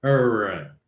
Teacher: Es una consonante retrofleja. Se pronuncia así como con la lengua así como curvada hacia atrás